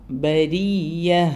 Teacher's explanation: ബരിയുടെ റ ലൈറ്റ് ആണ് അവിടെ പിന്നെ ഉയർത്തി പറയാൻ പാടില്ല